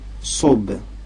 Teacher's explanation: C'est un S dit emphatique.